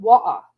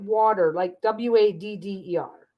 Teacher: skip the T sound altogether. Boston is like water.